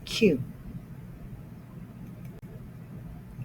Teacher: The tongue sort of curls at the bottom of the mouth, and the sound is coming from the throat.